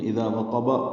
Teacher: اذا میں دال نرمی سے پڑھا جائے گا، اور اذا الف مدہ ہے، دو حرکات لمبا ہے۔ وقب میں واو ہونٹوں کی نا تمام گلائی سے ادا کریں گے، قاف پر اور با ساکن پہ قلقلہ ہوگا وقفاً۔